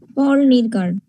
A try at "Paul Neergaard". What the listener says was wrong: নিরগার্ড না, নিয়ারগার্ড। পোল নিয়ারগার্ড। এর উচ্চারণগুলি শুনবা।